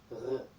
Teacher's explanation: Then add a little bit of your voice behind that. Some people equate it to a softer version of gargling with some voice behind it. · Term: guttural R